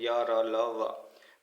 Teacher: सभी यहाँ पर सघोष होते हैं यानी बोलते समय उच्चारण करते समय स्वर यंत्रों में कंपन होता है, और ये सभी अल्प प्राण होते हैं या, र, ल, व। · ये सभी अल्प प्राण होते हैं या, र, ल, व। तो यानी इसमें हवा बोलते समय उच्चारण में हवा कम निकलती है